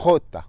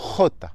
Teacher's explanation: La jota, c'est un son guttural qui se prononce avec la gorge. C'est un peu comme quand on racle la gorge pour cracher, donc ce n'est pas très glamour, mais c'est vraiment ce son.